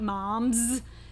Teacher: sometimes it sounds like a Z when you are using it at the end of a word that has a voiced consonant · something like mom's that final s sounds like a Z there and again that is a harder consonant sound just to produce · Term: plural s